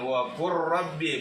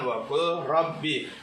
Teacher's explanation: Lam dalam fi'il amrnya dimasukkan ke dalam ra-nya. Jadi cara membacanya wa qur rabbi zidni ilma. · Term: diidghamkan